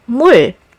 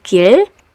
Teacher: As an initial consonant sound, it's usually sounded as the R sound, but as a final consonant, it's closer to the L sound.